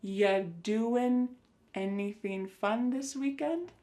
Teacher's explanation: When we say you doing anything fun, instead you're going to hear ya doing. Ya, the word you is reduced to ya. Ya doing. Listen to that G at the end.